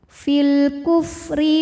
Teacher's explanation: huruf ro dibunyikan secara tarqi karena berbaris kasrah maka ro dibaca dengan tipis